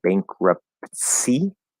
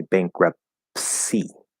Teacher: instead of saying bankruptcy we'll drop that t